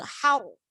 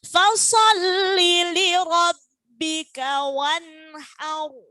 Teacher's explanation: Haru harus tebal karena sebelum ro sukun harokatnya fathah. Kalau sebelumnya ro tadi harokatnya kasro maka tipis, nggih.